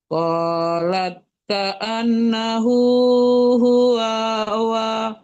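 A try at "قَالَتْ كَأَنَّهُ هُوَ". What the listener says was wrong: Qalat annahu huwa wanya tidak panjang ya.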